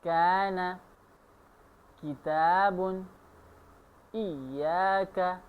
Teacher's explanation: اب دوسرا مخرج شروع کر لیتے ہیں کاف کا۔ زبان کا آخری حصہ قاف کے مخرج سے تھوڑا آگے سخت تالو کے ساتھ مل جائے تو اس سے کاف ادا ہوتا ہے